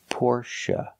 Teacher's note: the last syllable is pronounced uh like cup and up not a like say and pay but uh like cup and up Porche it's a relaxed sound